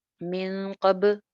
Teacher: बा पे कलकला आ गया, बाउंस बैक हुई आवाज